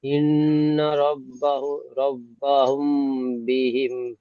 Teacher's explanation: এখানে আর একটা ইজরা হবে, নুনের উপর তাজদিদ এসে গুণনা করা ওয়াজিব, তাই গুণনা করে পড়তে হবে।